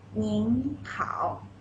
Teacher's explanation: So 您, it is the second tone. 好, it is the third tone.